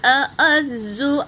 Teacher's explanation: زا پر کیا ہے؟ تشدید ہے تو اسے 2 بار پڑھیں گے